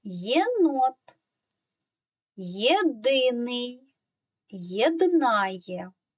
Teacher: перша буква Є у цих словах позначає два звуки звук й звук е